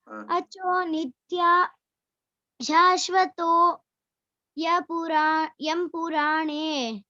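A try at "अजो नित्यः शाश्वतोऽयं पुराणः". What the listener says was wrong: చెప్పకూడదు. అజో నిత్య శాశ్వతోయం పురాణః. పురాణ కాదు, పురాణః. పురాణం అంటే పురాణః. అక్కడ పురాణ చదివేటప్పుడు అలా చదవాలన్నమాట. అజో నిత్య శాశ్వతోయం పురాణః.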